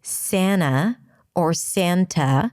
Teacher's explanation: The T can drop after an N in an unstressed syllable.